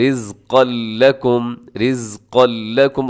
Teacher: لیکن اس میں ادغام ہوگا بغیر غننے کے، رزقا لکم، کوئی نون کا ساؤنڈ اس میں نہیں شامل ہوگا، بلکہ کیسے آپ نے پڑھنا ہے، پھر سنیے گا، رزقا لکم، رزقا لکم۔